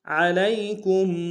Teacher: عین کو گہرائی سے ادا کریں گے، لام کو یا کے سامنے لانا ہے، یا لین بغیر کھینچے پڑے گی، کاف کو میم ساکن کے سامنے لانا ہے، میم ساکن میں غنہ کریں گے۔